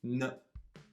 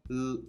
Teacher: when you make the N sound, a lot of the air is coming out of your nose, so if I pinch my nose while trying to say N, nothing will come out.